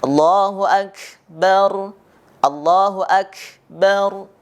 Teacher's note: akan terdengar kaf itu seperti ada sisa nafas kita. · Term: sifatul huruf hamas